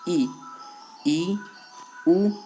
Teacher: तो अब जो समृत है उसमें देख लेते हैं। इन स्वरों को बोलते समय जो हमारा जो मुख है वो लगभग बंद रहता है